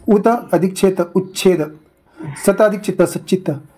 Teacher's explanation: त च्या पुढे जर च छ आल्यास तचा च होतोय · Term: व्यंजन संधी